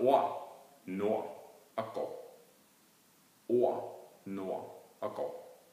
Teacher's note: Og RD hører man heller ikke noget D. Det hedder ord, nord og går. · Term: stumme konsonanter